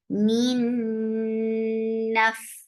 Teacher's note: This is idgham with gunna, so you're keeping the sound in your nose for a longer time.